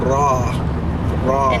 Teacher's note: there whereas an Arabic it's way more in the front and the raw you can hear that it's rolled